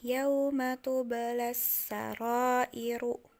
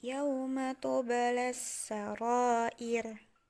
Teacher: Iru ketika akan diwakafkan menjadi yauma tubalas sarair. Jadi bukan dibaca iru lagi tapi jadi ir